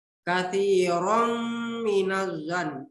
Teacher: Karena ada fathatain bertemu dengan huruf mim. Jadi dibaca berdengun. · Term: idgham di gunnah